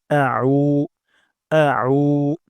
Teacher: উমজা হবে না এখানে আইন উচ্চারণ করতে হবে এটা খুবই গুরুত্বপূর্ণ আমরা আইন উচ্চারণ করব গলার মাঝখান থেকে